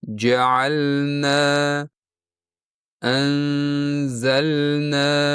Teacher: lam va nun bir-biriga juda yaqin joyda talaffuz qilinadi va yana lamni sukunli holatida kerakli miqdorda aniq ushlanmagani boiz ko'pincha ular bir-biriga aralashib ketadi. · Biroq to'g'ri talaffuzda siz lamni bir harakat miqdorda ushlab, aniq bildirib o'qishingiz, shundan keyingina nunga o'tishingiz kerak.